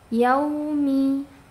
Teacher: Mi rapatkan dulu baru ke harakat kasrahnya.